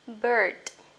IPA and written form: bɜ:d (bird)